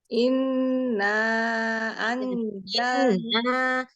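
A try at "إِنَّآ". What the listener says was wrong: Inna. Nah, jangan diayun di na gitu. Inna. Inna anzalna. Huruf zai ada tambahan suara. Anzalna. Jadi kalau dia jal itu nanti kayak huruf jim. Anzalna kayak huruf Z. Coba pizza.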